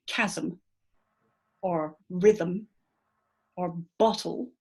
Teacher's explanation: you'll see that you have 2 syllables in each word, and the second syllable is a consonant. There's a consonant that's making that peak. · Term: syllabic consonants